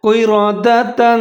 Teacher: را کے اوپر زبر ہے اس کو موٹا کرنا ہے